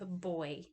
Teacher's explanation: Then we have boy, which is an open O and a little capital I, and that's low, mid, back, and then it goes to the high front